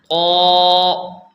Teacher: طا اس کو موٹا کر کے اوپر کی طرف آواز رہے، موٹا کر کے پڑھنا ہے